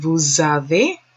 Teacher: there's a liaison between the s and the e